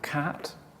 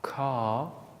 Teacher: So we have cat, single length, car, double length.